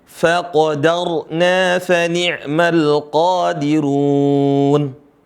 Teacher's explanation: Dan huruf ro-nya dibaca tebal.